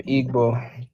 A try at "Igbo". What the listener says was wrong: You pronounce the G in Igbo?